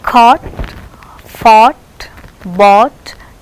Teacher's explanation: Back rounded vowel, lips are rounded between half close and half open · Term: long vowel